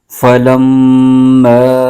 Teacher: میم کو لام کے ساتھ ملائیں گے اور میم مشدد میں ہمیشہ غنہ ہوتا ہے تو میم مشدد کو غنہ کے ساتھ پڑھیں گے۔ میم پر زبر ہے اور آگے الف، الف سے پہلے زبر آ جائے تو الف مدہ ہوتا ہے، پھر حروف مدہ کے بعد حمزہ دوسرے کلمے میں آ رہا ہے تو یہاں بھی مد منفصل ہو رہی ہے، اس کو 2.5 الف کی مقدار لمبا کھینچ کے پڑھیں گے۔